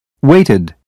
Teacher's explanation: waited ends with a new syllable pronounced ID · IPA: /ɪd/